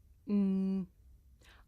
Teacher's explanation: I make this sound by closing my lips and letting the sound come through my nose mmm I can even feel my nose vibrating you try mmm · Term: consonant sound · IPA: /m/